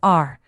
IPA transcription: ɑr